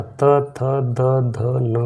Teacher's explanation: त वर्ग का त, थ, द, ध, न का दंत है।